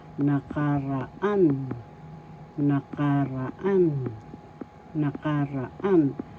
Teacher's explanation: First syllable na, second syllable ka, third syllable ra, fourth syllable an. The fourth syllable has the accent